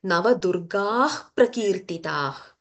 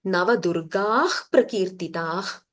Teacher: Navadurga, don't stop. There is no gap.